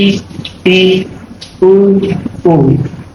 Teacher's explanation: समृद्ध का मतलब है हमारा मुंह ना के बराबर खुलेगा इन स्वरों को बोलते समय